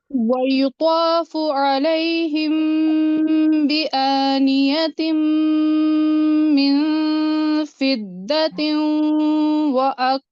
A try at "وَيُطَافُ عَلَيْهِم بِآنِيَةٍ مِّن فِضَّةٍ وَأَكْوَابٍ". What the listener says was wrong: अच्छा, यहाँ पे देखें, वयुतौफ, हाँ हाँ इब्राहिम, नहीं, वयुतौफ, अलिफ मत को हैवी करें। इसके बाद आपकी मिन फिल, बहुत हैवी नहीं था, मखरज ठीक नहीं था बहुत का।